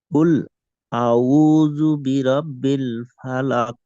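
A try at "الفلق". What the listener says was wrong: আচ্ছা, ফালাক, এখানে কফটা একটু মোটা করেন আর একটু কলকলা পড়েন। আচ্ছা, এখানে দেখেন কফ, ত, বা জিম, দাল, এই পাঁচটা হরফ হয়েছে যে কলকলার হরফ। কফ, ত, বা জিম, দাল, এই পাঁচটা হরফ হলো কলকলার হরফ। আচ্ছা, কলকলা অর্থ হয়েছে ধাক্কা দিয়ে পড়া।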